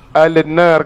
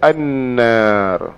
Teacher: Ha baca annar ni panggil huruf idgham. Idgham lam dimasukkan di dalam nun di panggil idgham samsiah.